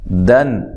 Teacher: یہاں نون تنوین کا اظہار ہے، غنہ نہیں کرنا